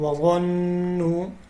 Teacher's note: غو کو موٹا پڑھنا ہے اور نون کے اوپر غنہ کرنا ہے